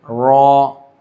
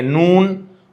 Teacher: را، نون کے تھوڑا سا اوپر جائیں گے۔ سرا زبان مع جھڑ ثنایا علیا، سرا زبان یعنی کہ نوک بھی بولیں گے، سرا بھی بولیں گے، اور ثنایا علیا، اوپر کے دانتوں کو ثنایا علیا کہتے ہیں۔